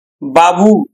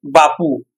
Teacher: বটা হচ্ছে ঘোষ বর্ণ, আর এখানে পটা হয়ে গেছে কিন্তু অঘোষ বর্ণ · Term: অঘোষী ভবন